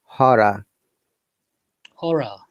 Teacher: Though there are double R and again R, but last R is not pronounced at all in both American and British English